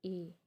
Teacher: मुख यानी मुंह हमारा कम या लगभग बंद ही रहता है, बंद के कगार पे रहता है ए। ईषद यानी अर्धविवृत और अर्धसंवृत सेम ही होते हैं, इसमें हमारा मुंह कम खुलता है, या तो आप कह सकते हैं कि कम खुलता है, या कह सकते हैं लगभग बंद ही रहता है, ए।